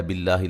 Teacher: لفظ اللہ کی لام کو باریک پڑھیں گے، اس سے پہلے زیر ہے